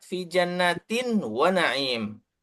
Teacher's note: Kemudian yang keempat, fi jannatin wa na'im. Tinnya itu an-nya pindah ke wawu karena tanwin bertemu wawu. Jadi idgham dan ditahan selama 2 harokat